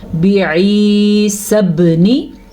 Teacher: با کو ہم لمبا نہیں کریں گے جبکہ یا مدہ کو ہم لمبا یعنی کہ کھینچ کے پڑھیں گے